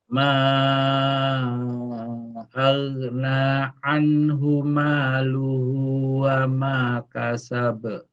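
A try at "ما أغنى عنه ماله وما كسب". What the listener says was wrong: Kurang ngalir di huruf ghoinnya. huruf goin ini saat dia dalam keadaan sukun pertama harus ada dua ya yang harus dilakukan. Pertama dia harus dialirkan suaranya, yang kedua harus tebal, ngalir tebal.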